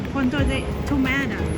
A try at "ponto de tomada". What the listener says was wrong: Day? That's G. Ponto de tomada.